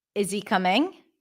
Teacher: We don't pronounce the H in the words him, his, her, his, him, his, he, when it's unstressed and connected. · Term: drop the H